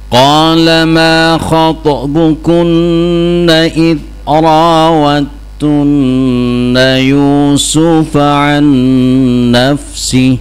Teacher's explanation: Di situ idra wad tunna ya. Jadi makhraj dalnya masuk ke ta. Ta ada tasdid ya. Jangan dibaca idra wad tunna ya.